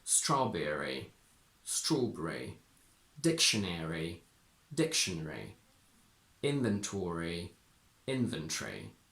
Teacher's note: In these words, we tend to swallow the schwa before the last r